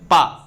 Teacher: पा बोलेंगे तो आपके दोनों ओंठ टच हो जाएंगे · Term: ओष्ठ व्यंजन